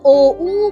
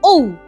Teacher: ঔতে ওটা পূর্ণ উচ্চারণ আর উটা এইরকমই অর্ধ উচ্চারণ তাহলে যৌগিক স্বরের একটা স্বর পূর্ণ স্বর আরেকটা হচ্ছে অর্ধস্বর এই